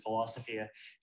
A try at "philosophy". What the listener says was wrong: He's done it again with philosophy. So he adds this weird sound, this weird diphthong sound, double vowel sound. When you said philosophy, you should say Philosophy. But he ended up saying philosophy. Okay, so that makes it sound, that will make native speakers notice, huh?